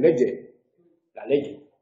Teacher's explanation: eso tiene que ver con la pronunciación sonora que hacen en Canarias de la che. En lugar de leche dicen leye, la leye.